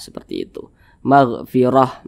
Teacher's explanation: di bawahnya huruf H maka itu adalah huruf ta marbutah Jadi kalau misalkan kita berwakaf atau berhenti tepat di huruf Ta marbutah Maka huruf ta dirubah menjadi huruf H maka ini dibaca magfirah jangan magfir jangan tapi dibaca magfirah seperti